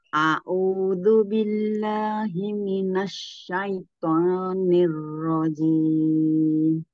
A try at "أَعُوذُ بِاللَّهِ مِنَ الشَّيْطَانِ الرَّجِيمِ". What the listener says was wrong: Masya Allah.